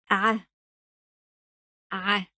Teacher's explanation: It comes from the middle of the throat, and your lower lip stretches when you pronounce it. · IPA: [ ʻ ]